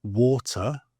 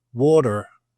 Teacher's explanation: the Brits tend to drop the emphasis or the pronunciation of the letter R unless it's followed by a vowel